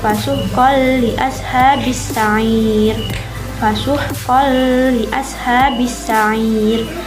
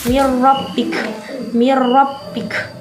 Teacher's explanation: mengidghamkan nun sukun atau tanwin pada lam dan ro tanpa berdengung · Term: Idgham bilahunah